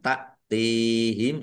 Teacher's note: hamzah sukun ya dibaca ringan ta'tihim ya lebih ringan daripada kaf atau ain